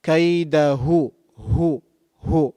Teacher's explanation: Ha is pronounced using the bottom of the throat.